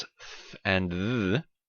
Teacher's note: the tip of your tongue is between your teeth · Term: dental fricatives